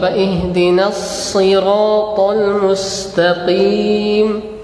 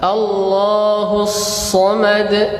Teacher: Huruf shad sifatnya yang pertama yaitu hams. Udaranya mengalir. Jadi ketika antum menyebutkan huruf shad, maka alirkanlah suara.